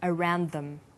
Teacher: This type of linking is called consonant and similar consonant linking. You'll notice that around is stressed, but them is unstressed.